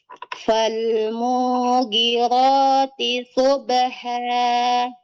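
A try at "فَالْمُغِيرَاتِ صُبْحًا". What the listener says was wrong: Nah, matnya setelah huruf ghan, Ibu ya. Setelah mim tidak ada mat. Fal mughirati.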